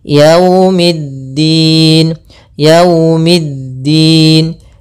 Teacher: Kemudian pada lafal waw, hati-hati jangan terlalu dihentakkan, karena di sini bacaan lin, maka kita harus menyempurnakan daripada linnya, kelembutannya.